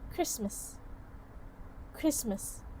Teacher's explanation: The sound t is omitted from cluster. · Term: consonant cluster reduction